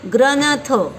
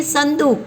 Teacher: क्योंकि थ त के वर्ग से आता है, इसलिए इसके अनुस्वार का उच्चारण न की तरह होगा